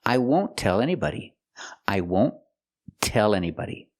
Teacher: We use the stop T for the T in won't.